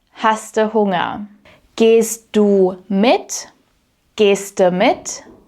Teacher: the word du often blends into the verb or disappears completely, and the verb itself gets an extra little e attached to the end.